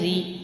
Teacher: یہاں زیر ہے تو را دیکھیں باریک پڑھا جا رہا ہے